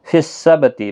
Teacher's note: با ساکن پر قلقلہ ہوگا۔